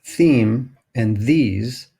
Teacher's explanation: sounds made that involve a constriction between the teeth and the tongue are called dental sounds or in this case as in the picture here interdental sounds